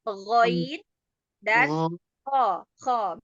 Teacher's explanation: tenggorokan atas adnal halqi, keluarnya huruf ghain dan kha